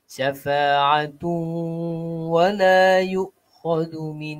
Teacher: tanwin bertemu dengan huruf waw, syafa'atu, perlu kepada dengung, dua harakat